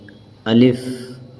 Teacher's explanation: الف منہ کے خالی حصے سے نکلتا ہے